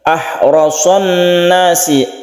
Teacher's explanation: haknya ini harus tipis, harus bersih, tidak menimbulkan suara kha gitu ya